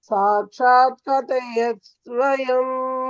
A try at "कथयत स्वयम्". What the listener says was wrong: கதயதஸ் ஸ்வயம். கதயத அங்க ஒரு த இருக்கு பாருங்க.